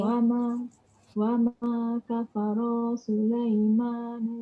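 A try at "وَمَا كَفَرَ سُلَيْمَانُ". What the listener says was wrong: Pendek. Wa ma kafara Sulaiman.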